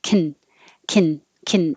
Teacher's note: you're really just going from the k sound to the n sound